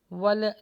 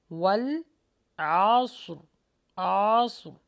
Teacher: یہاں پہ واو اور لام کے مخرج پر اپنی زبان کو روکیں گے، اس کو باؤنس بیک مت کیجیے گا، ول نہیں پڑھنا، والعصر، عصر، ٹھیک ہے۔